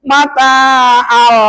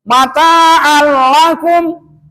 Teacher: Ada tanwin patah, ke depannya ada huruf lam. Idgham bila gunnah.